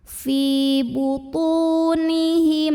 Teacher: mim sukun ini dibunyikan dengan izhar, jadi jelas bunyi M-nya. Fi butunihim na mad tabi'i karena ada alif yang didahului fathah. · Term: izhar syafawi